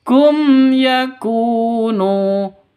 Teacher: mim mati bertemu dengan Ya jelas terang kum ya langsung kum ya ya mim matinya jelas ynya juga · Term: izhar syafawi